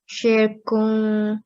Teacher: So make sure the N is not clear at the end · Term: ikhfa